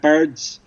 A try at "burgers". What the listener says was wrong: Didn't flow. You said birds. You didn't say burgers. You didn't say burgers. You said bergs, maybe. No, bergs.